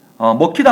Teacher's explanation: 기역과 히읗이 마찬가지로 키읔이 됐습니다. 이게 일단 자음 축약.